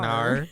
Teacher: it's like an O kind of ending sound, but then an R ends up on it